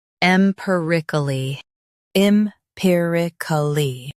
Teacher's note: Stress pi and keep k light.